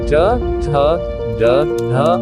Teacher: मूर्धन्य कठोर तालु के अगले भाग से